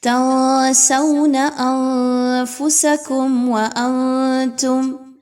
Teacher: تنسون انفسکم وانتم، میم ساکن کے بعد ایک بار واو آ رہی ہے اور دوسری بار میم ساکن کے بعد تا کا حرف آ رہا ہے. دونوں جگہ پر اظہار شفوی کیا جائے گا، غنہ نہیں کرنا · تینوں جگہ پر آواز کو ناک میں لے کر جائیے، غنہ کیجیے اور نون کی آواز کو کلیئر نہیں پڑھنا. تنسون انفسکم وانتم، میم ساکن کے بعد ایک بار واو آ رہی ہے اور دوسری بار میم ساکن کے بعد تا کا حرف آ رہا ہے.